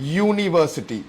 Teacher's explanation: it sounds like it's starting with a Y, with a consonant, and this is why you cannot use an university പറയാൻ പറ്റില്ല.